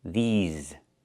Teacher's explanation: We use the long E like green beans and the Z sound with voice and vibration like in zebra